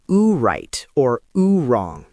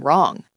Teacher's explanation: It was a rounded sound, almost like a little ooh before the R.